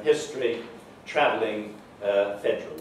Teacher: The elision of schwa, in particular in unstressed syllables, where it's followed by certain sonorants.